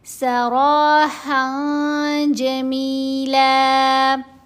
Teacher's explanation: پھر یہاں ہا کے اوپر 2 زبر ہیں، آگے جیم ہے، اخفا کرنا ہے. صراحن میں جو نون ہے اس کو ناک میں چھپائیں گے. صراحا جمیلا، ایک زبر پڑی جائے گی لام کی، ایک زبر خاموش رہے گی.